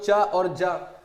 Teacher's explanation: चा और जा जो है ये आपका तालव्य व्यंजन होते हैं